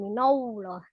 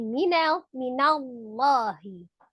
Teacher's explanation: Sebelumnya fathah maka dibaca dengan tebal, tetapi yang tebal adalah lamnya ya, bukan nunnya. Jadi bukan minallah, tapi minallahi.